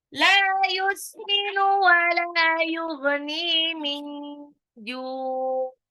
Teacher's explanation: Waktu menyebutkan ghain agak ngorok dikit ya, Bun. Dia satu makros dengan kha di tenggorokan bagian atas.